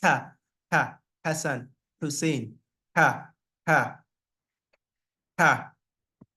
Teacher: the sound comes from the topmost part of the of the throat close to the mouth it's like a scratch on that part of the Troth so